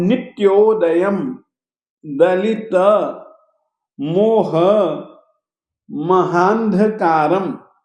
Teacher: नित्योदयम नित्योदयम द हलंत है त हलंत है तो त के कारण से हम नित्य ऐसा नहीं बोलेंगे हम बोलेंगे नित्योदयम दलित दलित मोह महानध अनुस्वार ध के पहले आएगा मोह महान ध कारम ये जो अनुस्वार है इसका उच्चारण अंत में होने के कारण से हम म के रूप में करेंगे परंतु हलंत म के रूप में करेंगे